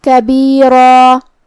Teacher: آخری میں را پہ تنوین زبر ہے تو یہاں را کا حکم ہے تفخیم. ہم را کو بھاری آواز میں ادا کریں گے. اگر ہم یہ آیت پہ رکے تو اس پہ مد الف سے رکیں گے اور مد الف اپنے پیچھے والے حرف کا حکم لیتا ہے تفخیم میں اور ترقیق میں، تو ہمیں را کو اور مد الف کو دونوں حرف کو بھاری آواز میں ادا کرنا ہے.